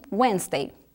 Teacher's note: a dica é o D não é pronunciado